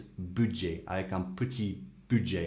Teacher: you don't pronounce the T in typical French fashion